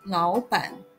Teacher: the tone of 老板 is commonly pronounced as second, third